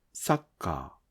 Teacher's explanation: if you lower the pitch of the letter sa, all mora's pitch drop. So do not drop the pitch of sa